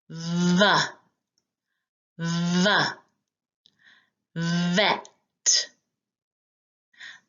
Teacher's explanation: We use one lip and our teeth to say V